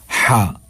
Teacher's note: ایک وہ جو زبان کی جڑ کے ساتھ ہے، اور ایک اس کے نیچے درمیان میں، اور ایک بالکل جو سینے کی طرف ہے. تو عین اور ہا یہ ہمارے حلق کے درمیان والے حصے سے ادا ہوتے ہیں. اگر آپ اپنی انگلی رکھیں گے نا، گلے کے درمیان میں اپنی انگلی رکھیں گے تو یہ حرف ادا کرتے ہوئے آپ کو محسوس بھی ہوگا.